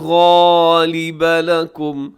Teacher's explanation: غالبہ اس میں غین ہے اور یہ موٹا پڑا جائے گا